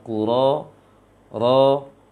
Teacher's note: yang tebal hanya Ku dan Ra saja di dalam ayat pertama ini, sedangkan ya sukunnya tidak boleh dibulatkan bibirnya ketika baca ya sukunnya setelah ro.